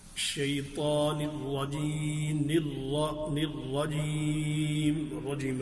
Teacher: را پر زبر ہے، تشدید ہے تو اس کو پر پڑھیں گے